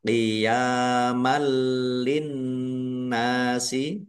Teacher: nun tasdid dibaca gunah atau mendengung. Ditahan biar tampak mendengung. · Ya fathah berdiri. Mad thobi'i panjang dua harakat. Fathah tanwin bertemu dengan huruf lam.